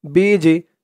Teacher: বা দিয়ে যখন এই জিম ধরবে তখন একটু আওয়াজটা ধাক্কা খাবে, বিজি, কারণ এই জিমটা হচ্ছে কলকলার হরফ, একটু ধাক্কা দিয়ে পড়তে হবে।